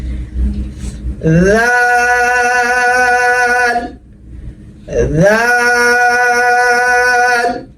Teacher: তারপর দাল, নিচের ঠোঁট বিছানো থাকবে, ওই যে থায়ের মতো, জিহ্বার আগা সামনের উপরে দুই দাঁতের আগার সঙ্গে লাগবে, জিহ্বাটা হালকা বের করে দিবেন,